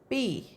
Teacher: fingers to your throat Adam's apple P no uh vibration and bilabial of course because both the lips are joined together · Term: voiceless P